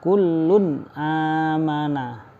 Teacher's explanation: kullun tanwin fhulun lamnya ditanwin kullun amanah bertemu dengan Hamzah amanah tidak dibaca dengung tapi dibaca jelas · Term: izhar halqi